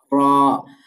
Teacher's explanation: জিহ্বার আগার পিঠ তার বরাবর উপরে তালুর সাথে লাগিয়ে র উচ্চারিত হয়